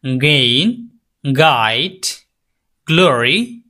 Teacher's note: এটাও ভেলার sound the back of the tongue to the ভেলা আপনার হচ্ছে যে জিহ্বার গোড়ালিটা তালুর দিকে স্পর্শ করে সাউন্ডটা বের হবে